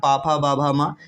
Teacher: उसी प्रकार पा वर्ग जो होता है, पा फा बा भा मा, इसको उच्चारण स्थान क्या होता है, तो पा फा बा भा जब बोलते हैं हमारे ओंठ क्या है, दोनों में टकराते हैं, दोनों आपस में टच करते हैं, तो क्या हो जाएगा, ये हमारा ओष्ठ उच्चारण स्थान कहला जाएगा।